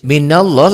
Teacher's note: lafad Allahnya dibaca tebal tafkhim